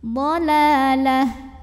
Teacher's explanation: tak marbutoh jika berhenti jadi ha sukun